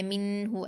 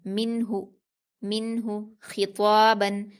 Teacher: اب یہاں پر آپ کو نون ساکن کا قاعدہ بتانا ہے کہ نون ساکن کے بعد ہا حروف حلقی میں سے ہے یا پھر ہا حروف اظہار میں سے ہے، اس لیے نون ساکن کی آواز کو ظاہر کر کے بغیر غنہ کے جلدی پڑھیں گے۔ منہ، آپ اس میں غنہ نہیں کریں گے، منہ ایسے نہیں کرنا، بلکہ جلدی پڑھیں گے اور اظہار کریں گے۔